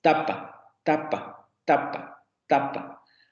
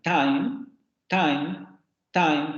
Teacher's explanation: nuestro fonema está articulado en los dientes tapa tapa tapa pero se articulan tan tan tan como en inglés en el inglés ese fonema está articulado como alveolar